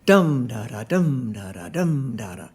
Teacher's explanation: The dactyl is heavy, light, light.